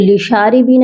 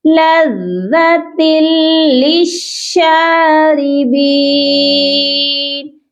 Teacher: شین بھی مشدد ہے، اس کو بھی سختی سے پڑھیں گے، اوکے؟ را زیر للشاری، را کو آپ نے باریک پڑھنا ہے کیونکہ را جو ہے زیر کے ساتھ باریک پڑھی جاتی ہے۔